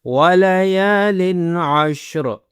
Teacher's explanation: یا کو کھینچنا ہے، یا کے اوپر زبر ہے، اس کے بعد الف ہے، تو اس کو ذرا لمبا کریں گے